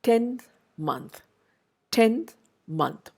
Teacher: But in a word like 10th or in a word like month, you will notice that the place where the n is pronounced or produced is in a position closer to the teeth, dental · the n in both these words, in 10th and month, it becomes more of a dental sound. Why? N is not a dental sound by itself. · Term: anticipatory assimilation